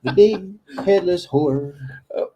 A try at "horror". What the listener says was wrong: You added the or at the end.